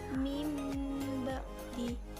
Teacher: iklab ini dibaca menggantikan huruf nun mati atau tanwin menjadi mim. Jadi membacanya mimba di gitu.